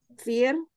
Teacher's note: dibaca tarkik atau tipis karena ro sukun sebelumnya berharokat kasroh